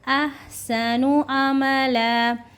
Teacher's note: احسنو کو ہم ہے کو حلق سے نکالیں گے، لیکن بالکل باریکی کے ساتھ